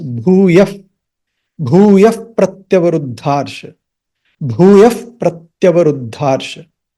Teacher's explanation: And F sound comes there. Instead of H or the visarga, you say bhūyaf pratyavaruddharsha. जब आप पदच्छेद करेंगे तो उसमें भूया ही बोलेंगे, जब अलग से बोलेंगे.